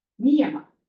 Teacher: Niyama, those are all short. So they all kind of get equal emphasis.